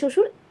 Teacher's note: শ্বশুর যে শব্দটা আছে, শ্বশুরে একদম শুরুতে আছে বফলাটা। বফলা যখন শব্দের শুরুতে থাকে, তার কোনো উচ্চারণ থাকে না